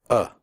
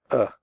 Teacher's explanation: different ways listen to these words about taken pencil supply provide the sound is made with your mouth slightly open and relaxed and without moving your tongue it comes from the throat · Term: schwa